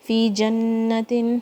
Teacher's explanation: جیم کے اوپر فتحہ ہے، نون شدہ اسٹرانگ والی غنہ.